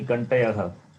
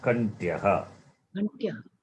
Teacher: It is Takara plus Ya is Yakara plus A. So Kantya, conjunct. There is no vowel between them